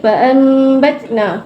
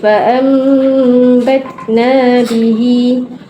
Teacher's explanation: mim ni dia sama makhraj dengan sama sifat dengan nun, iaitu ada gunnah, dan dia sama makhraj dengan ba, iaitu menggunakan bibir. So mim tu huruf yang paling senang lah nak gantikan huruf nun bila bertemu dengan ba, sebab ada similarity dengan nun, ada similarity dengan ba juga. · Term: iklab